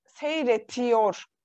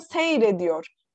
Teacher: Sonunda T harfi bulunan fiillerimiz yor ekiyle birleştiği zaman T harfimiz D olarak ünsüz yumuşamasına uğruyor